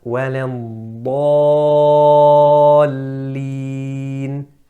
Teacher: the alif is mufakhama because the dad before it was thick.